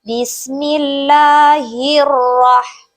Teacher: hukum bacaan alif lam syamsiah sebab Alif lamnya tidak dibaca